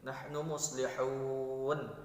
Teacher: mad arid disukun, dibaca panjang 2 sampai 4 harakat